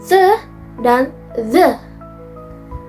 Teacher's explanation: dental, yaitu ujung lidah menyentuh atau berada di antara gigi atas